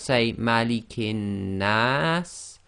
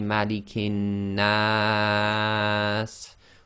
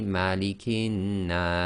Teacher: End of sentence, we pronounce the Seen as if it's sakin. So effectively we've got a long vowel with a sakin letter. So this can be 2, 4 or 6 long.